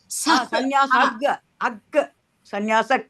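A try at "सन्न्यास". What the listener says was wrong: ಬರ್ಬಾರ್ದು ಭಗಿನಿ. ಹ ಅಷ್ಟೇ ಹೇಳ್ಬೇಕು, ಅಷ್ಟೇ ಹೇಳ್ಬೇಕು.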